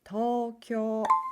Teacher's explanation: Actually, the correct pronunciation of Tokyo should be Tokyo. Both sounds need to be pronounced longer.